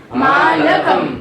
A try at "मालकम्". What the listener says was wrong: ला के बाद आ, इसको बोलना है, आधा ला नहीं बोल देना है। हिंदी में ये बड़ी समस्या है, किसी भी अक्षर के आ को गायब कर देते हैं। ला में भी आ है।